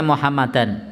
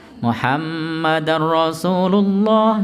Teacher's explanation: Muhammad harus ditekan, ditahan, digunnahkan